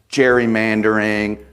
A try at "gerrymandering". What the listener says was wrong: The guy's last name was pronounced Gary, not Jerry. So it's gerrymandering, not gerrymandering.